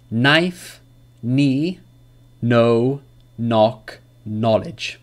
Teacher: There's no K sound in these words.